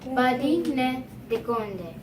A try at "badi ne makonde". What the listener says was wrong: You're still in dikonde. You don't want to change. Badi ne makonde means that they have bananas.